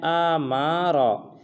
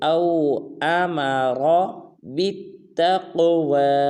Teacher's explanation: نہ حمزہ کو لمبا کرنا ہے نہ میم کو، بلکہ را کو پر ادا کرنا ہے